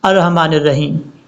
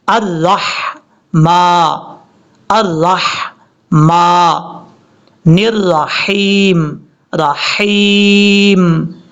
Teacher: را کے بعد ہا بریک ہے، جس کو رحمان پڑھتے ہیں یہ غلطی ہے، اس کو پڑھنا کیسے ہے، الرحمن الرحیم رحیم، اس طریقے سے۔